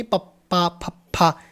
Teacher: ਸਾਡੇ ਬੁੱਲ ਆਪਸ ਵਿੱਚ ਮੈਚ ਕਰ ਰਹੇ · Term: ਹੋਠੀ